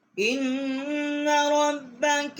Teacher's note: حمزہ کو ہم نے نون کے ساتھ جو ہے وہ مشدد کیا ہے، یہاں ہم نے غنہ کیا ہے۔ ربا کا را کو با کے ساتھ مشدد کیا ہے۔